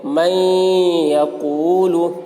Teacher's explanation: اس لیے میم نون کو یا سے ملا کر غنہ کے ساتھ پڑھیں گے، اس کو ادغام ناقص کہتے ہیں۔